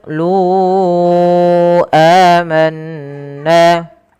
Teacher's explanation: Kemudian lu amanna pada lafal qolu lunya kita panjangkan empat harakat teman-teman karena di sini ada bacaan mad jaiz munfasil yang di mana adanya mad thabi'i bertemu dengan hamzah setelahnya. Pada dasarnya lu panjangnya dua harakat karena ketemu hamzah dan hamzah tersebut terpisah maka dia dipanjangkan empat harakat. Dan inilah yang dinamakan dengan mad jaiz munfasil.